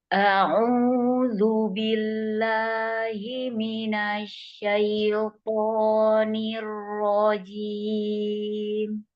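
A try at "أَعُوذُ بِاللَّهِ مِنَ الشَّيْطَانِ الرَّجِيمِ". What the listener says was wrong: Syaitoni. Buka dulu shinnya, baru ke ya. Asyaitoni. Iya, jadi A-nya buka dulu baru ke ya.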